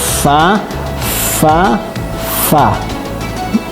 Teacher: fa itu enggak enggak bibir ketemu bibir tapi bibir ketemu gigi jadi fa fa fa gigi atas bertemu bibir bagian dalam bagian